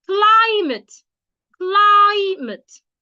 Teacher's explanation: you stress the first syllable by saying it louder, longer, and clearer